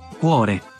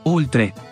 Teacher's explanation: y la O abierta, cuore, y O cerrada, oltre. Estas vocales abiertas del italiano no existen en español.